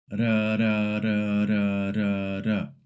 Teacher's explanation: It's a single tap, very light, almost like the TT in the English word butter.